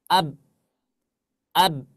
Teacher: ketika kita mengucapkan huruf ba di sana berhenti nafas kita ab ab enggak ada nafasnya bahkan suaranya juga gak ada Nah